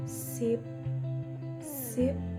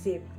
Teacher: Notice that the uh S is voiceless but the Z is voice